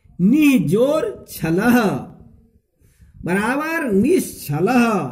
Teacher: इसमें देखिए इसमें विसर्ग का तालब स हो जाता है